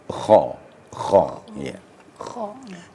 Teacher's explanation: kita apabila mengucapkan kata-kata atau huruf ko terasa getaran di kerongkongan